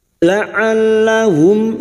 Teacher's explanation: La'allahum, mim sukun bertemu ya, idhar syafawi. Mim sukun dibaca jelas tanpa mendengung. Mim sukun mendengung hanya bertemu dengan huruf ba dan huruf mim.